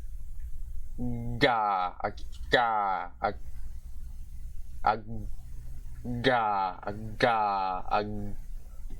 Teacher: it's a voiced palatal plosive consonant this time